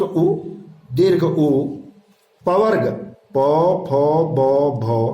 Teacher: पवर्ग प फ ब भ और उपगमानीय प ह के ओष्ठ उच्चारण स्थान हैं।